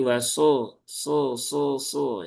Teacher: Huruf shad dia tempat keluarnya sama dengan huruf sin ya, sama dengan huruf sin tetapi sifatnya berbeda sehingga bunyi hurufnya pun juga berbeda.